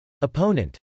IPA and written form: əpˈoʊnənt (opponent)